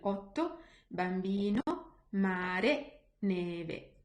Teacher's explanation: end of a word, O and E are always closed. Like, for example, in otto, bambino, mare, neve.